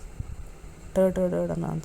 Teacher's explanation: ನಾಲಿಗೆ ಮಡಚಿ ಬಾಯಿಯ ಮುಂಭಾಗದಲ್ಲಿ ನಾಲಿಗೆ ಸ್ಪರ್ಶಿಸುತ್ತದೆ